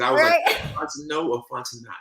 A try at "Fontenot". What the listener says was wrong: Don't pronounce the T. The T is silent.